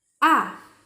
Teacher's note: the fourth tone it's like falling sound ah it's like when you yell at someone ah ah ah